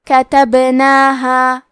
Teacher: کلمت کتبناہا میں با کے جزم کو ظاہر کریں گے اور اسے قلقلہ سے پڑھیں گے